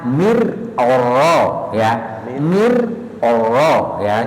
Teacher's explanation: Mirnya tipis, oronya tebal ya. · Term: tafkhim